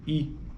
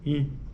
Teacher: Se você tentar observar a movimentação dentro da sua boca, sentir isso, você vai perceber que ela está de algum jeito lá atrás realmente tocando ou tendo algum efeito nesse véu, abaixamento do véu palatino, né? E aí a corrente de ar sobe, penetra na cavidade nasal, no nariz.